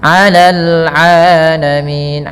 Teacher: ain jangan dibaca alamin, bedakan ain dengan hamzah